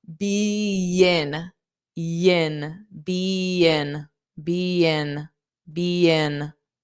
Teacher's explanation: I'm going to add a soft Y, which is a y, and I'll add it in front of the I